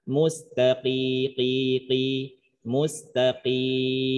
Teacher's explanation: Jangan diringankan bunyi kaf qaf menjadi kaf, khawatirnya mustaqim itu kaf.